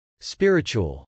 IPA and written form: spˈɪrɪtʃ.uəl (spiritual)